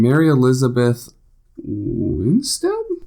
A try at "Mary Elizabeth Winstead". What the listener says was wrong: Mary Elizabeth Winstead. Winstead, not Winston.